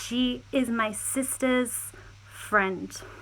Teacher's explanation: notice the stress on the sister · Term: possessive s